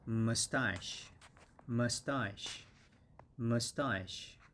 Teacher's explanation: the accent is on the second syllable, sta, and it's a long A, ah, and then sh, and when they're combined together, it's mustache, mustache, mustache.